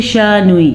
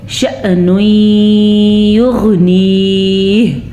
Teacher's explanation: اچھا جی، شأن یغنیہ، اکثر لوگ اس کو پڑھتے شانوی، یاد رکھیں جس الف یا حمزہ کے اوپر ساکن ہو تو وہاں پہ ہلکا سا جھٹکا پیدا ہوگا اور ساکن کی کنڈیشن اس کی ادا ہوگی۔